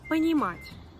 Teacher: La voyelle O qui était atone est devenue A. Parce que l'accent tonique a frappé une autre lettre.